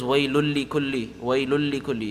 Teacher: But it's completely merged together such that you don't hear the noon anymore. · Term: complete idgham